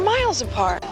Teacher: we stress on the second syllable